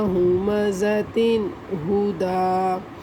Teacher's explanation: ہمازتن میں غنہ نہیں کریں گے ہم ملانے والی صورت کے اندر، جب ہم ملا کر پڑھیں گے اس لیے کہ آگے حروف حلقی میں سے ہا آ رہا ہے تو یہ بنے گا ہمازتن ہدا.